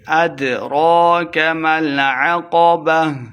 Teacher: دال ساکن ہے حروف قلقلہ سے خوب واضح کر کے پڑھیں گے